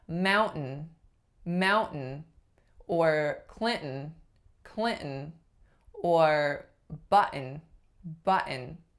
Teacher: American English if the sound right after is what's called a syllabic n that's a really heavy end that carries the weight of a whole syllable · those are all glottal stops followed by an N sound.